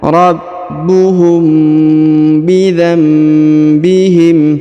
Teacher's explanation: mim sukun atau mim bertemu dengan ba maka ditahan dua harakat